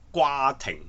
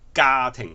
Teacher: 我哋應該讀家庭，係冇咗個▁W▁嗰個音，嗰個音係好似英文裏邊嘅▁G▁音